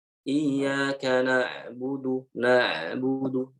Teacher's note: jadi huruf ain ini suaranya tidak langsung mati ya